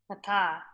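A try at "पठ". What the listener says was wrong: Patha. Not pata. The ta, the sound is not coming properly. You have to practice cerebral letters. The ucharanam of cerebral, you have to practice. It is patha likacha.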